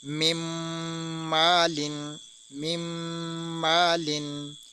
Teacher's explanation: اب ہم نے نون کو نہیں پڑھا، آگے میم کو میم سے ملایا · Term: ادغام